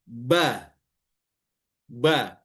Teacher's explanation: Istifal, tidak terangkat pangkal lidahnya. Karena ba makhrajnya 2 bibir.